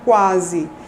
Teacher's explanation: nós temos uma sequência de oclusiva velar seguida de um glide, né? Então, oclusiva velar é o K, né? · A proeminência acentual é na vogal A. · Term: ditongo crescente